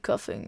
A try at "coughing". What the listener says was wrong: Coughing? And coughing. The way you pronounced that word was like you were cuffing someone with handcuffs.